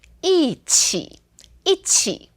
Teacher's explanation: when it's paired with other tones, then we speak it as a fourth tone